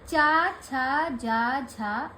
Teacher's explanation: वो है तालव्य ना। च वर्ग का भी उच्चारण स्थान तालव्य ही है।